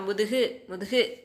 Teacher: குற்றியல் உகரம் அப்படின்னா தன்னுடைய ஒரு மாத்திரை அளவிலிருந்து குறைந்த அரை மாத்திரை அளவாக ஒளிக்கும்.